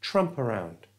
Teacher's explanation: And because the schwa sound is a vowel sound, we can move the P, the P from the end of tramp, to the front of it. So it's not tramp around, it's tramp around.